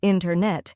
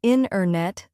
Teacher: The t sound gets softer or disappears. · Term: dropped sounds